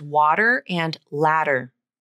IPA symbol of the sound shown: ɾ